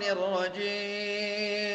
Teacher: أنت كأنك أملت الجيم ولم تحقق الكسرة. الرجيم، انتبه لمثل هذه فاكسرها ولا تملها.